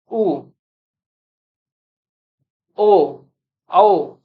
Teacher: यह पश्च भाग से बोले जा रहे हैं। तो इस वजह से पश्च स्वर बोलते हैं।